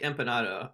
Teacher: when an n occurs before p, it is labialized, which means it's brought to the lips